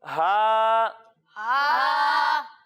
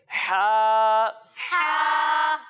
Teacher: और जब हम हा की अदायगी करेंगे तो इसे हम हलक के दरमियानी हिस्से से पढ़ेंगे।